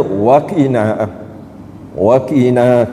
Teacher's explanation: Mad asli ni maksud ni kena panjang dua harakat kan.